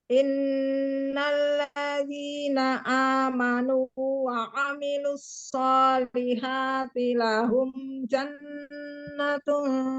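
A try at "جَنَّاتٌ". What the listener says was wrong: Jannatun. Nanya panjang loh itu. Lahum jannatun.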